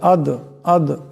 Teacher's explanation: এখানে মিমের উপর মদ আছে লম্বা করে পড়তে হবে আদর এখানে দাল সাকিন দাল কলকালার হরফ অবশ্য টক্কর খাবে · আদরাকা, এখানে দাল সাকিন, দাল কলকলার হরফ, আওয়াজটাকে টক্কর খাবে। আদ আদ এমন করে।